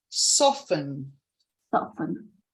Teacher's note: when we say this word, we don't really hear the t sound, so it's soften.